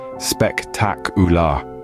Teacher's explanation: when we say spectacular the stress shifts to the second syllable